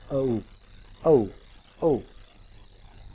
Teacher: schwa sound और U sound मिल के एक साउंड बनाते हैं, वो है औ. औ औ.